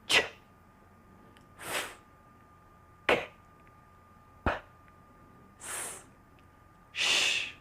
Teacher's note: here are several sounds that are voiceless in English.